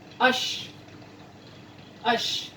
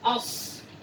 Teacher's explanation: Nah, untuk huruf shin itu lebih besar nafas yang dikeluarkan ya, ash. Nah, kalau as bibirnya lebih dimonyongkan ke depan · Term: huruf shad